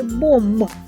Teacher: звісно приголосний бо наші губи щільно зімкнені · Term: звук м